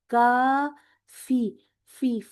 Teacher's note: अपने ऊपर वाले दांतों को नीचे वाले होठ का जो उभरा हुआ हिस्सा उस पे लगाएं और एक वो फूंक वाली आवाज भी आती है।